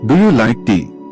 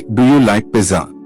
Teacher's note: Yes/no questions, the voice goes up at the end. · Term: intonation